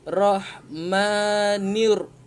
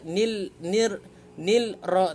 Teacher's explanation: Alif lam ini tidak dibaca. Masukkan terus ke dalam huruf yang ketiga, yakni huruf ra. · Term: alif lam syamsiyah